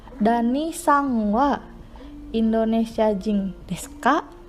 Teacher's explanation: Partikel K di sini diletakkan di akhir kalimat setelah des. Dan cara pengucapannya dengan meninggikan intonasi.